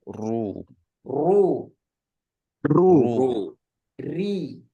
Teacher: Harus bergetar lidahnya. Tapi getarnya nggak terlalu banyak juga ya.